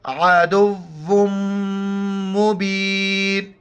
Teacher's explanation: دال کو واو کے ساتھ ملائیں گے اور واو کو میم کے ساتھ ملائیں گے